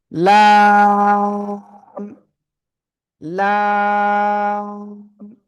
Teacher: জিহ্বার আগার কিনারা উপরে মাড়ির দাঁতের গোড়ার সাথে লাগিয়ে আমরা এই অক্ষরটা উচ্চারণ করব এবং চার আলিফ টেনে পড়ব